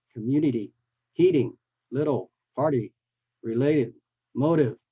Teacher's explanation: we flap the T into a D, unlike the, not like the British